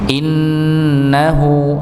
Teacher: untuk nun tasydid maka didengungkan tanpa dengan menghentakan